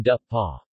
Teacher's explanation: when it follows [p], for instance, it assimilates in manner and place, and becomes /-pa/